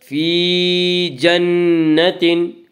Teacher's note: لسعیہا راضیہ فی جنت عالیہ، فی یا مدہ، یا مدہ وہ یا جو ساکن ہو اس سے پہلے زیر ہو، یا مدہ کو ایک الف کے برابر کھینچ کر پڑھیں گے۔ فی جنت، نون مشدد غنہ ہوگا، غنہ کی مقدار ایک الف ہے۔